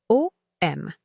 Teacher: Commencez par un O, rond, ouvert au fond de la bouche, qui se prolonge vers un M nasal, fermé, où la vibration se condense. L'idéal est une transition fluide.